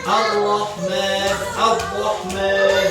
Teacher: Hasromah itu menghilangkan getaran pada huruf ro. si getaran nanti dihilangkan.